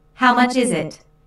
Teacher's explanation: notice that the main sentence stress falls on is in this question